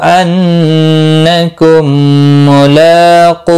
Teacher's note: नून मुशद्दद पर गुन्ना होगा। मीम साकिन के बाद दूसरा मीम आया है, यहाँ पर इदगाम शफवी होगा, गुन्ना के साथ पढ़ेंगे। लाम के ऊपर खड़ी जबर है, 1 अलिफ के बराबर खींच कर पढ़ेंगे।